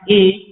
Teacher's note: यह दो स्थानों से बोला जाता है, कंठ से और तालु से, दोनों से मिलाकर ये दो अक्षर बोले जाते हैं। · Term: कंठ तालु